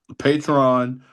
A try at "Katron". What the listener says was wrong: No, Katron with the K. Katron.